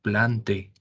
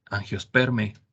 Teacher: la pronunciación cuando está el diptongo ae en las palabras de los taxones se pronuncia como e